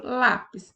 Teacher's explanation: paroxítona palavra em que a penúltima sílaba é mais forte